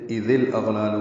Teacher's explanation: إذ حمزہ کو زال سے ملانا تھا، لیکن الاغلال حمزہ عارضی ہونے کی وجہ سے اذ الاغلال ہوا. ذال نرمی سے پڑھیں گے اور لام سے ملائیں گے، اظہار قمری ہوگا حمزہ کی وجہ سے. · حمزہ کو غین سے ملائیں گے، غین پر پڑھیں گے اور اس پہ اظہار ہوگا. دونوں لام باریک ہیں، پہلے والے لام کو دو حرکات لمبا کریں گے